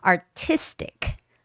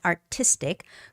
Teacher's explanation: artistic the stress goes on I